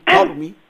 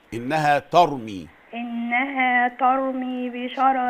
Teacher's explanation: ممكن نفخم الراء شويه ونقول ترمي